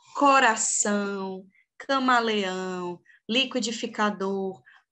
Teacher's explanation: Todas essas palavras possuem a sílaba mais forte como a última da palavra. Então, elas são oxítonas.